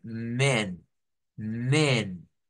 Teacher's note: en el plural de hombres en inglés no se usa la a sino que se usa una e y se usa una e abierta